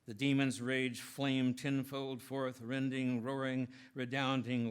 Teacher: The prophecy literally roars, especially through such techniques as the alliterated R's and F's and the clusters of plosives, as in the symmetrically sounded rage flamed tenfold forth rending.